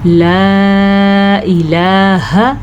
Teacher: اچھا بعض لوگ چھوٹا کرنے میں جھٹکا مار دیتے ہیں، لا الہ ایسے کرتے ہیں، نہیں یہ بھی غلط ہے، حمزہ کی آواز نہیں آنی